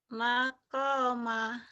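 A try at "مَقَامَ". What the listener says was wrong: koknya panjang ibu.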